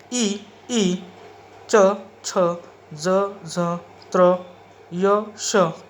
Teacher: इनका उच्चारण करते वक्त तालु और जीभ का संबंध आता है और ये आते हैं तालव्य श्रेणी में